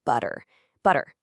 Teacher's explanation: you just lightly tap your tongue right against the roof of your mouth. Actually, it feels exactly like the double T in the American English word butter. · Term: soft tapped R